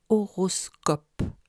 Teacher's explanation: mot horoscope utilise la même graphie o pour deux timbres différents le O mi fermé dans les deux premières syllabes et le O demi ouvert dans la dernière